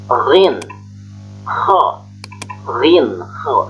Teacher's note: rin dan ho ini keluarannya atau makhraj hurufnya itu dari apa yang disebut dengan ujung tenggorokan atau disebutnya dengan aksol halki.